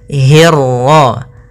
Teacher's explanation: hi-nya tipis, ketemu ro-nya yang tebal. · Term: ro tafkhim